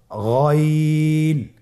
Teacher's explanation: গইনের মাখরাজ কোন জায়গায় আপনারা স্ক্রিনে দেখতে পাচ্ছেন, ছবিতে দেখা যাচ্ছে। গইন হরফটি উচ্চারিত হয় কণ্ঠনালীর শেষ ভাগ হতে।